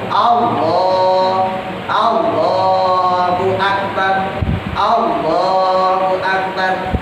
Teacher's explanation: Allahnya pendek, yang panjang lohnya ya. Punya pendek, akbar juga pendek.